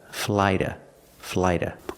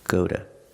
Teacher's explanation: walking to the park another pronunciation of the word to is we're using a fast D sound like water bottle and we're using the short schwa sound